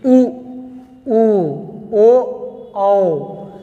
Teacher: जिनको बोलने पर ओठ की आकृति एकदम गोलाकार हो जाए, इन्हें क्या कहेंगे, वृत्ताकार स्वर